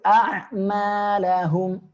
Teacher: huruf hamzah ketemu ain ya pangkal tenggorokan huruf ainnya di tengah tenggorokan jadi naik